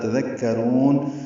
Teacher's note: قلیلا ما الف مدہ تذکرون، تا دال کاف نرمی سے ادا کریں گے، را کو پر پڑھیں گے اور لمبا کریں گے. تذکرون، وقفاً مد عارض بالسکون.